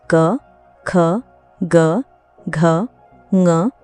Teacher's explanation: क वर्ग के सभी वर्ण क, ख, ग, घ, ज्ञ कंठ्य व्यंजन कहलाते हैं। इनके उच्चारण में जीभ का पिछला भाग कंठ को स्पर्श करता है। · कंठ्य व्यंजन वे होते हैं जिनका उच्चारण कंठ यानी गले से होता है। · इनके उच्चारण में जीभ का पिछला भाग कंठ को स्पर्श करता है। क एक स्पर्श व्यंजन भी है, जिसका अर्थ है कि इसके उच्चारण में वायु मुख के किसी विशेष भाग को स्पर्श करके बाहर निकलती है। कंठ्य ध्वनियों का उच्चारण करते समय हवा बिना किसी रुकावट के कंठ से बाहर आती है।